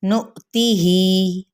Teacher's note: एक अलिफ या 2 हरकत के बराबर खींचेंगे, इससे ज़्यादा नहीं खींचना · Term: मद्देसली बिल या